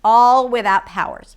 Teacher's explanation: And she drags the word because the idea is that I didn't have any powers